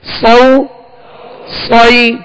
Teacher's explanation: صاد کو سیٹی کی آواز میں اور پر پڑھیں گے، موٹا پڑھیں گے، حروف مستعلیہ میں سے.